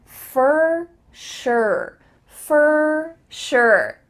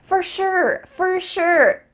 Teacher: Even though for includes an O and a sure includes a U, they both sound like E-R.